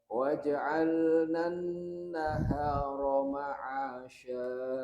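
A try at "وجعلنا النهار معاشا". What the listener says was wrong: Lagi Pak. Wa-nya masuk dulu.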